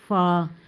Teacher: हैं हमें इतना ज्यादा तरदार आगे हमारा अगला लफ्ज है फा ऊपर वाले दांत का किनारा जब निचले होंठ के अंदरूनी हिस्से से मिले तो वहां से फा अदा होता है यह तो बहुत ही आसान है यानी कि ऊपर वाले होठ